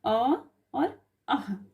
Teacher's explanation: अ का उच्चारण कंठ से होता है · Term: कंठ स्वर